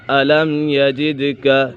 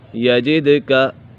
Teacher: جیم یہ دال کے ساتھ جب ملے گا تو یہ دال کے اوپر قلقلہ ہوگا